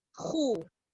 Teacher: Kha baris atas bunyinya tetap kha. Baris depan khu. Ni dua-dua tebal.